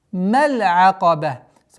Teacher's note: Каф твердый, и при остановке та марбут аннулируется, огласовка аннулируется и переходит в сукун, превращаясь в звук ха. وَمَا أَدْرَاكَ مَا الْعَقَبَةُ.